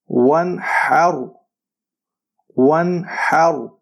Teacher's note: اخفاء اس لیے نہیں کیا کیونکہ آگے ہمارے پاس جو اگلا حرف ہے وہ حروف حلقی میں سے ہے